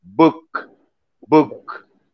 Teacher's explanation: the bilabial sound b when you pronounce book book